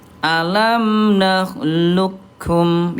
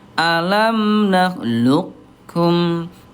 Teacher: menebalkan huruf qof dulu baru ke kaf